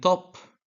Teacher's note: t in top involves the tongue touching in the alveolar ridge